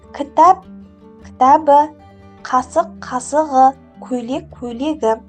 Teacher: Қ, К, П дыбысына аяқталған сөздерге дауысты дыбыстан басталатын қосымша жалғанғанда қатаң дыбыстар ұяңданып кетеді.